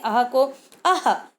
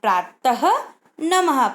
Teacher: अब हमारा अगला अक्षर है अह। अह में ह विसर्ग प्रोनाउंस होता है, ह का साउंड आता है।